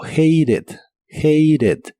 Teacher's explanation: en este caso es muy común en inglés americano pronunciar la t como r